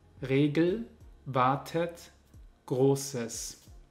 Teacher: In all diesen Fällen ist das E ein Schwa, aber es wird sehr, sehr stark reduziert und es ist fast nicht hörbar.